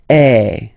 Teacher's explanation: you combine this uh vowel a with the vowel e okay you will get the sound e so really open E